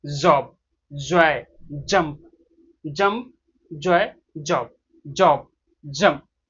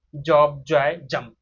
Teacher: तो ये वाला जो ज साउंड करेंगे, जीभ को ऊपरी हिस्से में टच करेंगे और गले से वाइब्रेशन आने देंगे।